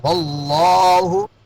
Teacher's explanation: لفظ اللہ کو موٹا پڑھیں گے کیونکہ لفظ اللہ سے پہلے زبر ہے